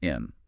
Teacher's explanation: the most common one of all is and. It simply becomes in.